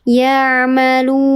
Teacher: Ya'malun. Mad bertemu dengan huruf hidup yang mati karena diwaqafkan, namanya mad arid li sukun.